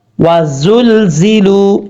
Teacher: زا جو ہے سیٹی کے ساتھ پڑھا جائے گا کیونکہ یہ حروف صفیریہ میں سے ہے. یہ سیٹی ہے.